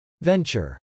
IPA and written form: vˈɛntʃɚ (venture)